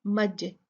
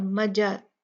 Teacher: بیمج، جیم جو ہے یہ قطب جدین قلقلہ حروف میں سے ہے تو ہم یہاں پر جیم کو ہلا کے پڑھیں گے، مج، اس کو مجنون نہیں پڑھیں گے، مجنون نہیں، مج مج، اور مجا بھی نہیں ہوگا، مج، جلدی سے جیم کے مخرج کو چھوڑ دیں گے